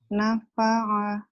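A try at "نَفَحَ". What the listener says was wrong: Nafaha. Nafaha kalau ain yang kecil, ini gede ya. Nafaha kayak apa tuh? Kayak tanduknya kerbau ya, gitu gede. Nafaha.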